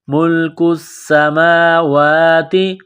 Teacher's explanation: کاف کو باریک کرنا ہے، سین کے ساتھ ملانا ہے، سین مشدد ہے، غنہ کریں گے. ملک السماوات، میم کے اوپر کڑا زبر ہے، واو کے اوپر کڑا زبر ہے، ایک الف کے لمٹ میں کھینچنا ہے.